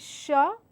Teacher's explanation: So when I say sh, I mean it is a less vibrating, or rather no vibrating sound. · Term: sh sound